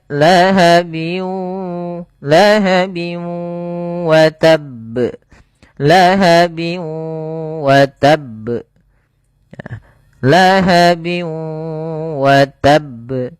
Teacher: Bi gunnah atau ya di sini idgham ma'al gunnah, yaitu idgham yang disertai dengan gunnah, yaitu cara membacanya yaitu masukkan suara tanwinnya bin ketemu wa, dimasukkan ke huruf waw dan ditahan karena disertai dengan gunnah. Lahabiu wa, bukan lahabiu wa tapi lahabiu wa, karena dia masuk gunnah, masuk ke rongga hidung. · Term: idgham bi gunnah